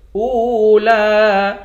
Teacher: لَفِي الصُّحُفِ الْأُولَى، حمزے کو واو کے ساتھ ملا کر واو کو ایک الف کی مقدار کھینچ کر پڑھیں گے، آخر میں لام ہے، لام کے اوپر کھڑا زبر ہے، اس کو بھی ایک الف کی مقدار کھینچ کر پڑھیں گے۔